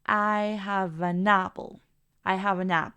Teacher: estamos conectando el sonido de todos ellos haciéndolos uno solo